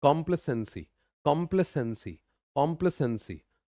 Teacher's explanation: और कॉम्प्ले, प्ले पे जोर ज्यादा है